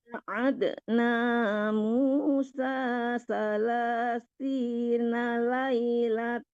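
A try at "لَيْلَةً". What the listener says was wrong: Ditarik ke hidung ya Bu. Jangan laila tau. Kalau laila tau terus tasdidnya doang baru belum dengungnya ya.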